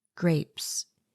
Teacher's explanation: you hear the hard g sound the rolling er sound blending with the g you hear the long a sound and the air pop of the p sound the e on the end is silent because it is following